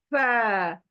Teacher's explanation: फ, यानी ये कहाँ से आधा होता है, ऊपर के दांत, ऊपर के दांत, ऊपर के दांत का किनारा जो है ना, मेरे होंठों के गीले हिस्से को टच कर कर ये लेटर आएगा